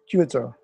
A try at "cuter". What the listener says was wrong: Cuter. Excellent.